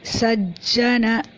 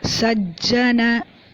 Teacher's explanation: stress on the ja because it's like 1/2 and 1 full.